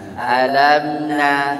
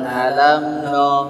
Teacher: nunnya tidak boleh terpengaruh jadi no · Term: tipis